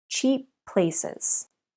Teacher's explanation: we have two P sounds together so again the two words share the sound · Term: linking two consonants